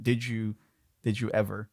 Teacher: how we have a t plus y becoming a CH sound when we have a d plus y it becomes a j sound